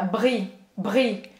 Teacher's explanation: Esse R que tem que arranhar na garganta.